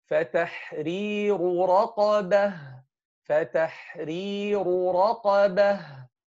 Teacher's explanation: Here we have two ra'at, تَحْرِيرُ ra, the first ra is light, then the two other ra'at are heavy.